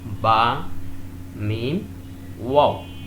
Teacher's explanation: These 3 letters are pronounced from the 2 lips.